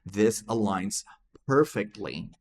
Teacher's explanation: Então, temos a palavra align. A gente não pronunciou esse G, tá?